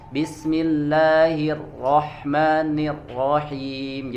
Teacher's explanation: getarannya hilang jadi tidak bergetar ya tidak ada taqrir · Ya, yang pertama itu biasanya ada yang membaca ya huruf ro getarannya hilang ya, getarannya hilang. Jadi tidak bergetar ya, tidak ada takrir ya.